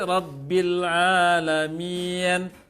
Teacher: Kalau kasroh memang ke atas di lidah sedikit, ya. Kasroh yang panjang tengah lidah terangkat sedikit.